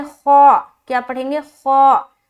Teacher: استعلا کی صفت پائی جاتی ہے، موٹے پن کی صفت ہے، تو اسے موٹا کر کے ہم پڑھیں گے